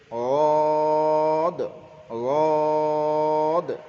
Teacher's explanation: জিবের কিনারা এবং দুই পাশের দাঁতের মাড়ির গোড়ার সঙ্গে লাগিয়ে উচ্চারিত হয় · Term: জদ